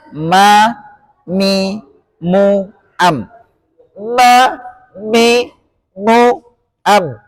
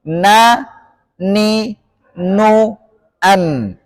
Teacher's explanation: Makhraj sifat dengung adalah rongga hidung. Sifat dengung ini adalah sifat yang senantiasa menyertai huruf nun dan mim yang disebut dengan dengung atau bahasa Arabnya gunnah.